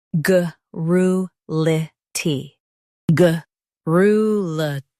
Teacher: ga rru li ty garrulity ga rru li ty garrulity Stress rru and keep lity light. · Stress ru and keep litty light.